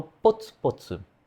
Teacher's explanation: O som de P, que é um pouquinho mais explosivo do que só shito shito